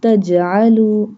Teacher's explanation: Jim. We do qalqalah on jim.